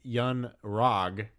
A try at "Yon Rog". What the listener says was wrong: Yon Rog. Yon Rog. No, but you said Young Rog.